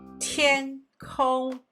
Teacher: The word for the sky is 天空. Both are first tone.